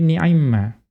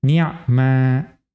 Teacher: Kalau idgham menjadi ni'imma. Wa adamihi atau tidak diidghamkan menjadi ni'ma.